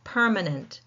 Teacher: Again following that rule of three syllable words the first syllable is taking the stress.